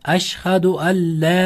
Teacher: sukunlik nun harfini Lga o'zgartirib g'innasiz o'qiymiz. G'unnasiz idg'om degan qoida.